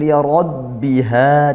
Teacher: di sini ada ra fathah dibaca tafkhim, ditebalkan ya. Tafkhim tebal yaitu pangkal lidah dinaikkan.